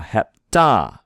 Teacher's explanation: the stress should be on the ta